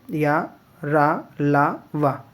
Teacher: या तालू से बोला जाता है रा मूर्धा से बोला जाता है ल दंत से बोला जाता है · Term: अर्ध स्वर